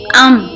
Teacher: ہونٹوں کا باہر والا خشک حصہ آپس میں ملتا ہے، اس کے ساتھ آواز کا کچھ حصہ ناک میں بھی چلا جاتا ہے، جیسے حمزہ میم زبر ام۔